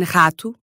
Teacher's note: But in other spots, it sounds like a uvular R, r, specifically at the beginnings of words